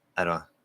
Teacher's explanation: With the I before it, we'll even flap the D, even though technically it's at the start of a stress syllable.